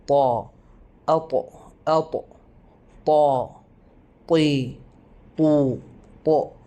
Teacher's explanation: ഹർഫുത്താ ഏറെ കട്ടിയുള്ള അക്ഷരമാണ് നമ്മുടെ നാവ് കുഴിയാകുന്നത് പോലെ അനുഭവപ്പെടും